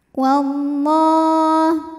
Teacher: lafaz Allah dibunyikan secara tafkhim karena huruf sebelumnya berbaris fathah, maka dibaca tebal.